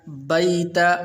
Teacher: وَإِذْ جَعَلْنَا الْبَيْتَ، بیت، یہ یا جو ہے یہاں پر یہ حروف لین میں سے ہے، تو اس لیے اس کو لمبا نہیں کرنا